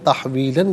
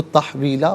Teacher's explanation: لام دو زبر لن، تحویلن، یہاں وقف پڑھیں گے تو تحویلا پڑھیں گے